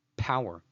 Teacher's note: which is a voiceless bilabial plosive that makes a /p/ sound, as in the word 'power'